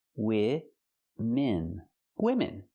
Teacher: Use the short I sound for both syllables.